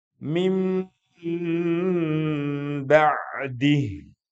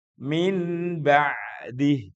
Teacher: Nunnya hilang, berganti dengan mim. Maka biasanya dikasih tanda mim kecil tuh. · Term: iqlab